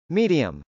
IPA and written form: mˈidiəm (medium)